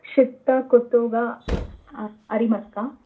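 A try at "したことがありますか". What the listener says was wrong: ಒತ್ತು ಹೇಳಬಾರದು ಶಿತ್ತ ಅಲ್ಲ ಶಿತ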